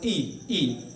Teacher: जीभ के अगले हिस्से से ध्वनि निकलती नजर आई हमें